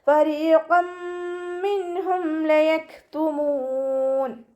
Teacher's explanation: കാഫ് സുക്കൂനാവുന്ന സമയത്ത് കുറച്ച് air pass ചെയ്യണ സൗണ്ട് കൊടുക്കുക കേട്ടോ